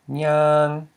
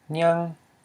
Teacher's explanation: nyang for to walk is a long vowel, and it's a mid-tone, and here we have nyang, which is a short vowel and a high tone.